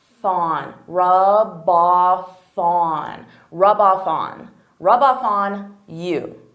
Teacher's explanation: So here I'm taking the F from off and I'm adding it to on.